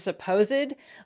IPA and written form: səpozd (supposed)